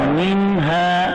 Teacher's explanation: नून के बाद हर्फ हल्के आ गया तो इसमें इज़हार हल्के होगा, गुन्ना नहीं होगा।